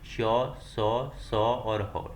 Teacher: जिन व्यंजनों के उच्चारण में एक प्रकार की गर्माहट या क्या सुरसुरा हट से प्रतीत होती है ऊष्म व्यंजन कहलाते हैं